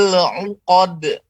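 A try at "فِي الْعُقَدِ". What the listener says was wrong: Dengan cara melebarkan dan santai saja. Fil 'uqad. Uqad. Sambil dilebarkan. Uqad. Uqad. Jangan uqad. Itu biasanya keluarnya daripada gusi, lebih naik dia. Tapi kita di bawah. Fil 'uqad. Fil 'uqad. Uqad. Uqad. Jadi keluarnya daripada gigi, bukan tengah langit-langit, bukan atau gusi ya. Uqad, bukan, tapi d. Jadi suara pantulan qalqalahnya itu dimunculkan daripada terfokus kepada gigi yang lidah kita tempelkan kepada gigi lidah, ujung lidah.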